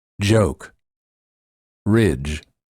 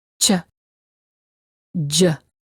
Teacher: To produce these two sounds, the tip of the tongue is down, the sides of the tongue are up against the upper teeth on the sides of the mouth. The tip of the tongue quickly touches the gum ridge and then releases.